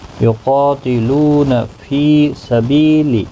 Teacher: قا الف مدہ ہے، لو واو مدہ ہے، فی یا مدہ ہے، بی یا مدہ ہے، چاروں کو ایک ایک الف کی مقدار کے برابر کھینچ کر پڑھیں گے۔ قاف مستعلیہ ہے، پر پڑھا جائے گا، اس کے ساتھ الف بھی آیا ہے، یہ بھی پر پڑھا جائے گا۔